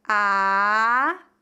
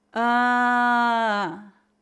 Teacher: Note que o nariz vibra muito mais quando pronunciamos a vogal nazal